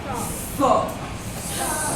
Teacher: और स ये जो है इसको दंत स बोलते हैं, यानी दांत से टच करके आवाज को बाहर निकालते हैं।